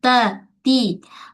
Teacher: hujung lidah kita menyentuh pada belakang pangkal gigi atas. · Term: huruf ta